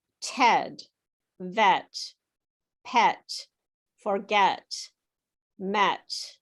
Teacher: your mouth is gently smiling so smiling just a little bit and the sound is made at the front of the mouth